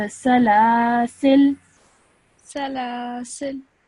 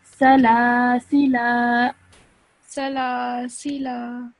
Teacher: you would end your sound at the lam, okay, because it has a sukoon. So salasil. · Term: lam with a sukoon